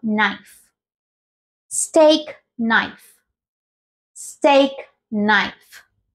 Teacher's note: palabra parece bastante complicada sobre todo porque empieza con una k y una n pero en este caso lo que vamos a hacer es omitirla acá porque no suena